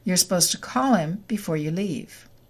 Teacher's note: The D is deleted and we get supposed to.